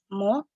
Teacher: berasal dari kedua bibir yang saling bertemu, menempel agak lama terlebih dahulu sehingga terdengar mo.